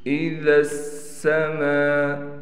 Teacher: ذا کو ادا کرتے ہوئے دونوں دانتوں کے درمیان میں ہم زبان لائیں گے۔ میم کے بعد الف ہونے کی وجہ سے حروف مدہ کیا جائے گا اور حروف مدہ کے اوپر مد ہونے کی وجہ سے اس کو ہم 5 الف کی مقدار کھینچیں گے۔ · ذال نرم حرف ہے اور سین سخت یعنی سیٹی والا حرف ہے، تو دونوں کو ہم نے صحیح طریقے سے نکالنا ہے، اس بات کا خیال کر کے۔